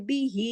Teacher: जब ये दोनों हरकत वाले हरूफ के दरमियान में आ जाए तो यहाँ एक मद कायम होती है जो 2 हरकत खींची जाती है, इस मद का नाम है मद्दे सिला सुगरा।